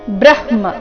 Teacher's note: ಬ್ರ ಆದ ನಂತರ ಮೊದಲು ಅರ್ಧ ಹ ಆಮೇಲೆ ಪೂರ್ತಿ ಮ ಬರಬೇಕು.